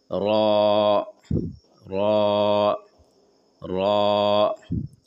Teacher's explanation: र जबान का किनारा हल्का सा ऊपर तालू में टच करते हुए र अदा होते हैं। र बोलते समय आप देखेंगे आपका जबान का नोक ऊपर के तालू में हल्का सा सटेगा। · زبان کا کنارہ ہلکا سا اوپر تالو میں ٹچ کرتے ہوئے را ادا ہوتے ہیں